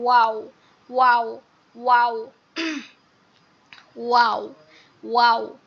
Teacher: প্রথমটা হবে একদম গোল করে, যেমন হচ্ছে ছোট বাচ্চারা যখন অনেক সময় সুন্দর করে ঠোঁটটা গোল করতে পারে, বাচ্চারা এটা সুন্দর ভালো পারে। ওয়াও ওয়াও, একদম পুরো গোল হয়ে যাবে ঠোঁটটা।